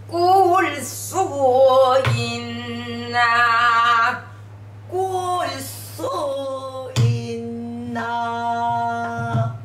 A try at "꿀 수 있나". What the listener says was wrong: 있나를 너무 길게 빼면은 아, 안 돼.